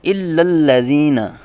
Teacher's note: آگے ہے الا الذین، دونوں لام باریک پڑے جائیں گے اور زال پہ نرمی کی جائے گی، سیٹی کی طرح تیز آواز نہیں نکالیں گے